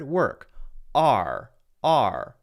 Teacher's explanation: in the case of work in this specific case there is no or sound just the r sound